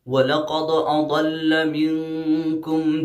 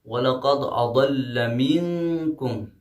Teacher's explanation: وَلَقَدْ، وَلَقَدْ میں دال آیا ہے آخر میں، اگر ہم یہاں پہ وقف نہیں کرتے ہیں ملاتے ہیں تو یہاں پہ قلقلہ صغرا ہوگا کیونکہ دال ساکن ہے